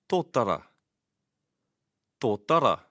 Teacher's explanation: the t is sounded with the tongue behind the front upper teeth